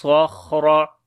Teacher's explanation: خا کو بھی موٹا پڑھیں گے، را کو بھی موٹا پڑھیں گے، خا کے اوپر بھی صفت ہمس ہوگی، ٹھیک ہے۔